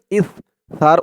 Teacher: ইস উচ্চারণটা একদম নরম পাতলা করতে হবে জিহ্বার মাথা উপরের দাঁতের মাথার সাথে লাগবে